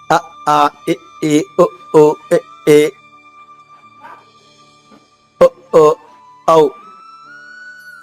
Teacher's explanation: అంటే పెదవుల కదలకి వస్తుంది. కానీ ఆ అచ్చుల ఉచ్చారణలో పెదవులకు అలయక ఉండదు. అ ఆ ఇ ఏ ఒ ఓ ఎ ఓ ఔ ఇలా గొంతు నుంచే వస్తాయి